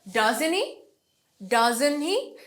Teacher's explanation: Doesn't তে জোর দিব, হিটা কম।